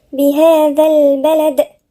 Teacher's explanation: بعدين نقف عند الدال بالقلقلة